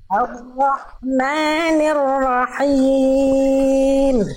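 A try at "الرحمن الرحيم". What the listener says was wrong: Ar-Rahmani. Nah ini, jangan nir. Hamdalahnya bagus, jangan nir, jangan nir. Jangan Ar-Rahmanir nir. Ni. Jelaskan dulu kasrohnya. Ar-Rahmanir-Rahim.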